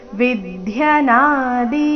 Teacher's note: ವಿದ್ಯನಾದಿ ನಾದಿ ಎರಡು ದೀರ್ಘ